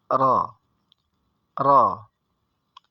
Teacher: membacanya dengan tawasud, yaitu diucapkan dengan berjalannya huruf. Sehingga ketika membaca sambil diawali kemudian dilepas saja.